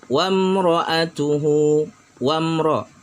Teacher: Wamra'atuhu, wamra, mim sukun bertemu dengan ra, mimnya jelas, ra-nya jelas, izhar syafawi.